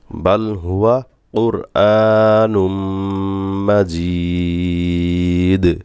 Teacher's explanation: জের উপরে জমা ইয়া মাদে হরফ তারপরে হরফে ওয়াকফ হইছে দালে ওয়াকফ হইছে দাল কলাকলা করতে হবে